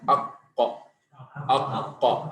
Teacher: makhraj qaf itu adalah pangkal lidah atau lidah bagian dalam dengan langit-langit yang lunak